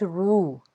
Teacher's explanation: واو ساکن سے پیچھے پیش ہے تو ایک الف کے برابر ایک تو اس کو کھینچ کے ادا کریں گے، اور را کے اوپر پیش نظر آ رہی ہے تو را کو ہم نے پر پڑھنا ہے۔